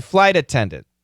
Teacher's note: This is going to be a flap T